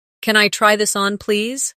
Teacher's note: Notice how try this on blends slightly. It makes your speech sound smoother.